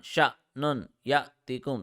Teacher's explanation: So here we are not applying qalqala. We are making it jerky because of the sukoon on hamza. Because whenever hamza has a sukoon, we make it jerky.